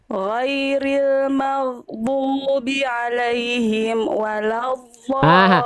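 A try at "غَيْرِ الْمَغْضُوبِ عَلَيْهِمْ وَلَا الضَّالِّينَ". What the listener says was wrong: Hati-hati mim sukunya jangan ini, jangan berhenti. Ghairil maghdubi alaihim wala, amnya jangan berhenti, harus tawasud. Ngalir terus amnya sedikit. Ghairil maghdubi alaihim wala, ya. Him wala dhalin.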